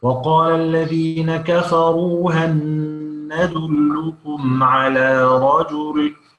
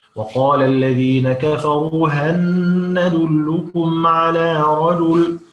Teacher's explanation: يبقى هنا اللام تحولت إلى نون وأدغمت في النون في كلمة ندلكم، فأصبحت نون مشددة، ونعلم أن النون المشددة، بارك الله فيك، النون المشددة تغن، يبقى هنغن.